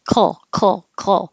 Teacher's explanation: Your back of your tongue is making your K, coal, while the front of the tongue can make the L at the same time. Coal. So I can hold it here for the L at the same time the back of my tongue is making a K.